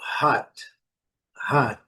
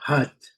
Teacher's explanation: A gente vê aí uma mistura de O com A